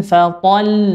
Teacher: tidak boleh dipanjangkan to-nya